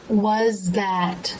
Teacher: That's because you can get away with making the voiced TH sound, especially at the beginning of an unstressed syllable, by pressing the tongue behind the closed teeth. So the tongue tip will press behind where the teeth come together, but not actually come all the way through like it does for the unvoiced TH.